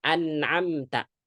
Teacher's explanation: An'am itu ada gunnah tapi jangan ditahan. Karena itu ibaratnya ya durasi tawassut atau ya durasi ya jangan ditahan.